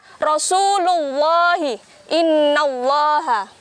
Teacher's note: tafkhim dibaca tebal tiangnya sebelum lafadz Allah terdapat fathah atau dhummah